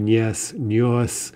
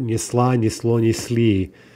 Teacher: in the masculine form, the L has dropped out, right? Originally, it would have been there.